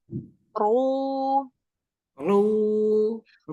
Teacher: tekniknya pangkal lidahnya dinaikin. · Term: ro tebal